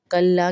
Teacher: کلا کے لام الف لا کو ایک الف کے برابر کھینچیں گے کیونکہ الف مدہ ہے